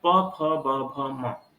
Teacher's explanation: व्यंजनों में प, फ, ब, भ, म, इतने वर्णों का ओष्ठ से उच्चारण किया जाता है, इसलिए इनको ओष्ठ्य कहा गया।